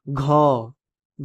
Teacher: घ जो है कि कंठ से बोला जा रहा है